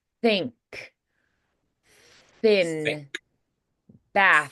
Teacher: So voiceless is going to be very hissy, very airy.